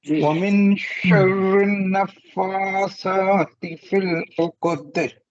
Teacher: फा के ऊपर भी खड़ा जबर है और सा के ऊपर भी, दोनों जगह 2 हरकत के बराबर, 2 सेकंड